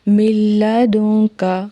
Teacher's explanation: میم کی آواز لام میں ملائیں گے، ٹھیک ہے، لام میں مدغم ہو جائے گی